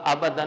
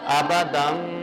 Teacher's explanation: آگے کیا آ گیا جی، یہ کیا ہے، نون تنوین، ٹھیک ہے، اور اب پھر کیا کریں گے ہم، چھوٹی بال، ٹھیک ہے، تو کیا بن جائے گا، آبادن نہیں پڑھیں گے، کیا پڑھیں گے، آبادم، غنہ بھی ساتھ کریں گے